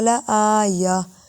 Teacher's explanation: گولتا وقف میں ہا کی آواز دیتی ہے